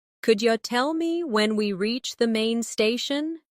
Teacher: Could you tell me when we reach the main station? Notice how could you becomes could ya.